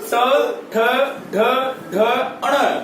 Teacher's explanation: इन सभी का उच्चारण स्थान मूर्धा है